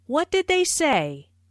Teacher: Notice how say is emphasized, but the intonation falls at the end of the word.